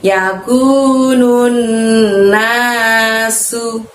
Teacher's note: pakai sin kecil tanpa titik 3, maka mengucapkannya dengan ringan, tidak usah meniup angin dari dalam mulut ya